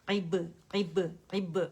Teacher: اس میں عین موٹا ہو جاتا ہے زبان کی جڑ اوپر چلی جاتی تو وہ آپ لوگوں نے دھیان رکھنا ہے کہ زبان کی جڑ نیچے رکھنی ہے